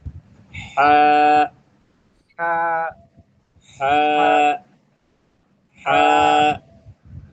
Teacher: এটা একটু হলকের ভেতর থেকে আওয়াজ হবে, একটু গলার মধ্যে দাব দিয়ে, হা, হা, হা। হা, একটু হলক, অর্থাৎ কণ্ঠনালীর মাঝ থেকে দাব হবে, হা, হা, হা, হা, হা, হা।